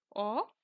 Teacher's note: যেমন অ, এবং এটা যখন আমরা উচ্চারণ করি, না ঠিক ওপরের দিকে থাকে, না ঠিক মিডিলে থাকে, না ঠিক নিচের দিকে, উপরের থেকে 1/3 ছেড়ে নিচের দিকে নেমে আসে, তখন সেটি হলো নিম্ন মধ্য স্বরধ্বনি